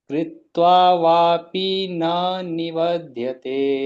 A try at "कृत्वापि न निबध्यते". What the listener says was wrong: कृत्वा वा दो बार नहीं है, कृत्वा वापी नहीं है, कृत्वापि न निबध्यते।